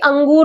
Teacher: जब शब्दों का उच्चारण करते वक्त नाक से हवा निकलती है उसे हम कहते हैं अनुस्वार